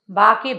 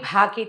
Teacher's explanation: బా అంటే అల్పప్రాణం, భా అనాలంటే మహాప్రాణ అక్షరాలు. మహాప్రాణ అక్షరాలని అవి గట్టిగా ఒత్తి అవతల వాళ్ళకి విసుగొచ్చేలాగా కాదు, లోపల నుంచి శబ్దం రావాలి.